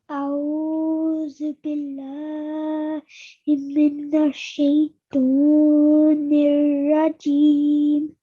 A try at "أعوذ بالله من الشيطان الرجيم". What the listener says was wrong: Now at the beginning over here, just make sure that you're saying the alif separate and then the ayn separate to that, okay? So don't merge the two sounds together. So we're going to say أعوذ.